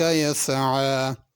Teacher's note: यसआ में आइन है, यसआ हमज़े के साथ नहीं पढ़ना।